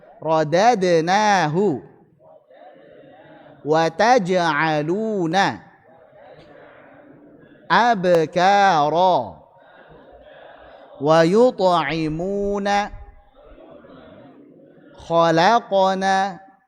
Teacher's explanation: Kita praktikkan coba qalqalah yang sugra saat wasal jangan diputus pantulannya. Jangan rodadnahu tapi rodadnahu.